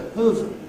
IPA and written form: həv (have)